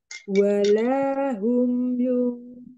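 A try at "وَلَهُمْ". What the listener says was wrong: jangan walahum tipisin wala mundurin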